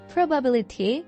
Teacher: The third syllable receives the main stress.